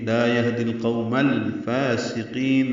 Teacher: سین حرف صفیریہ میں سے سیٹی کی آواز سے ادا ہوگا، قاف پر پڑھیں گے، لمبا کریں گے، اور نون ساکن پہ وقفاً اظہار ہوگا اور مد عارض سکون بنے گی، یعنی لمبا کریں گے۔